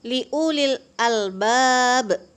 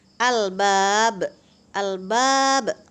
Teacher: apabila huruf qalqalah yang mati terdapat di akhir ayat dan bunyi pantulannya dikeraskan seolah-olah dia hidup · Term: qalqalah kubra